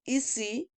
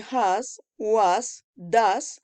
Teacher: The sound is a sonorous sound. The voice is voiced. Place of articulation alveolar.